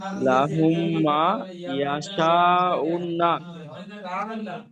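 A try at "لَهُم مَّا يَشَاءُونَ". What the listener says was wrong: উন্না নয়, আপনি বলছেন উন্না, এখানে উন্না নেই, এখানে আছে উনা। উনা, হ্যাঁ এখানে আছে উনা।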